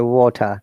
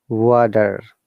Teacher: R is silent, T is prominent,